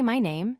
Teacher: When you say my name, stress the word my and pronounce it clearly.